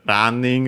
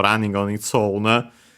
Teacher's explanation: Good thing I checked also running on its own, because it's one of those words from English that become unaccented in Japanese